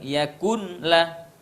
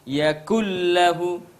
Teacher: Nun sukun dilebur ke dalam huruf lam. Yakullah, tidak terdengar lagi suara nun. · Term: idgham bila gunnah